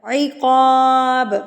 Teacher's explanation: با وقف کی صورت میں قلقلہ. عقاب، ب کو ہلا کے پڑھیں گے، یہ قلقلہ کو ظاہر کرتا ہے